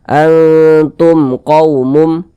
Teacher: karena izhar syafawi maka dia dibaca jelasah tidak berdenggung baca pendek saja · Ini mim sukun, setelahnya adalah huruf qaf, bukan huruf ba, bukan huruf mim, maka hukumnya adalah izhar syafawi. Nah, karena izhar syafawi maka dia dibaca jelas, tidak berdengung, baca pendek saja.